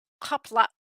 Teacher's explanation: The glottal stop in Klingon is also written with the apostrophe, like at the end of the word kapla. It doesn't just end in an ah, it ends in an ah that abruptly cuts off with that glottal stop.